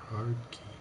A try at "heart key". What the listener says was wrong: Heart key, not hard key.